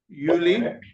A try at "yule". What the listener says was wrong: Yule. you're still having the problem. No, you're still having the problem with the E. You have said again Yuli. It's Yule. Yeah, it's not Yuli. It's not Yuli, it's Yule. Yeah, you're still confusing the letter E and letter I.